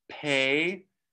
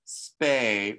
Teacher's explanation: we get pay with the puff of air but spay where there's no puff of air